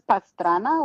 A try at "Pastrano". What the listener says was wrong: Pastrano. It's with an O.